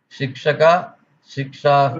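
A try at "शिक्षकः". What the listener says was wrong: No, it's not Sikshaka, it's Sikshakaha. Be careful about the visarga also. Shikshakaha.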